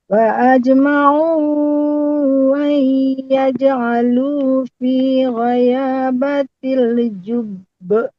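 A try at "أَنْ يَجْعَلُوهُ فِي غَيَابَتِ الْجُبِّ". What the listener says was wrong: Tadi hu-nya enggak kedengaran Bu Dokter ya. Ayyaja'aluhu. Atau mungkin karena jaringan mungkin ya.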